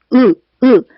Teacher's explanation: 그리고 으 발음할 때는 으 하고 혀가 뒤로 당겨지는 느낌이 들면서 혀뿌리가 이렇게 올라갑니다.